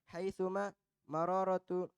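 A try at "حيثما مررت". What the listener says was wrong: Haituma marortu. Bukan marorotu.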